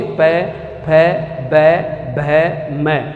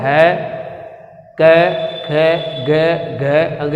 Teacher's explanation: प वर्ग जो है, प वर्ग के अंदर अगर हम बात करें, प वर्ग को जब उच्चारित करेंगे तो हमारे होठ जो है वो आपस में टकराएंगे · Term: ओष्ठीय